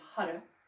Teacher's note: mantra for this the sound vibration is Hara h a r so there's a slight rolling R